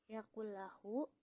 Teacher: nun sukun bertemu huruf lam, jadi bunyi nun melebur sepenuhnya karena ke huruf lam tanpa mendengung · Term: idgham bila gunah